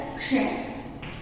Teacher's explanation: तो श पूरा बोला जा रहा है और क का सिर्फ साउंड सुनाई दे रहा है। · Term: संयुक्त व्यंजन